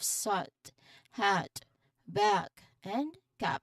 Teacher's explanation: So this is the short sound. It's a short, open, and slightly tense sound where your mouth is quite wide and your jaw is dropped.